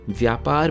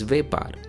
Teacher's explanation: The Sanskrit 'vy' sound also becomes 've' in Gujarati. So 'vyapar' (business) becomes 'vepar'.